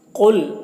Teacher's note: قاف کو پر پڑھیں گے، یہ حروف مستعلیہ میں سے ہے